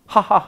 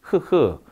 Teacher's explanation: 성대가 조음기관으로 사용되어 조음되는 소리입니다 · 우리나라 흐 소리, 히읗 소리는, 네, 성문에서 납니다. 하하하 할 때, 흐흐. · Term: 성문음